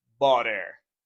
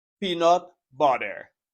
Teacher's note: when you have T between two vowel sounds, you make a flap T and you pronounce a little D. You say butter.